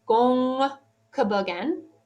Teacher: there is a nasal sound that precedes the K in the inflected form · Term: floating nasal